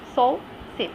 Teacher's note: you'll find no vibration in your vocal cord